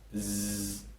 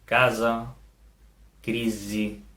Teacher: el so de la S sonora, on sí que hi ha vibració de les cordes vocals